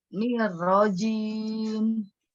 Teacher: Ketika dia sukun sebelumnya dia kasroh, dia tipis, nir, tipis.